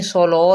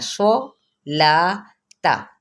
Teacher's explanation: صوت کو پر کرنا ہے، لا کو نہیں